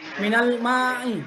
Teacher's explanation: Ya, minal ma'i yang merupakan mat tabi'i. Mat tabi'i ini adalah pemanjangan suara pada huruf mim setelah huruf alif. Dan sebelumnya adalah ada harakat fathah.